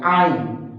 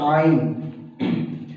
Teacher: आइन को हम हलक के दरमियान वाले हिस्से से अदा करेंगे